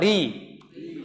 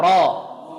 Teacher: Pangkalnya nggak usah naik ketika dia berharokat kasrah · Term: tipis